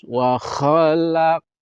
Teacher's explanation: Wa khalaq, wa pendek, kho pendek, kho ya, yang kemarin dibahas huruf kho. Jadi kotor, ada riaknya, ada ngoroknya. Semakin dapat ngoroknya semakin bagus.